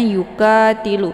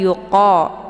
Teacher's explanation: Qa ini ditebalkan ya, makharijul huruf qa ini tepatnya di pangkal lidah. Jadi saat melafadzkan, pangkalnya naik ke atas menempel dengan langit yang lunak. Qa ya, jangan dibaca ka, jangan yuka tilu, tapi yuqa ya.